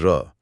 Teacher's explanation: जैसे र इसे प्रकंपित या लुंठित कहा गया है। इसे बोलते समय जीभ आगे पीछे कांपती है